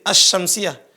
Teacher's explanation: Jadi bunyi lam hilang, karena udah masuk ke shin. Nah, hilangnya bunyi lam dan nampak suara setelah huruf lam menjadi tasydid, itu namanya al-idgham.